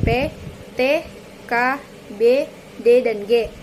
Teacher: konsonan yang dihasilkan dengan menghambat aliran udara dan kemudian melepaskannya tiba-tiba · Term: konsonan letup